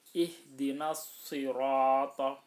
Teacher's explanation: Shadnya harus dibaca tebal, ro-nya juga harus dibaca tebal karena shadnya itu huruf istilah, ro-nya juga huruf istilah.